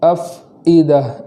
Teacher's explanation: فا کا جزم بھی اس طریقے سے پڑھیں گے کہ اس پر زبر نہ ہو جائے